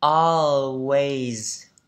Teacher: Với âm này chúng ta tròn miệng và chúng ta kéo dài nó ra. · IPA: ɔ